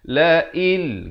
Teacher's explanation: Asalnya hamzah baris bawah bertemu nun bunyi in. Tapi bila datang lam masuk tanpa dengung. Idgham bila gunnah.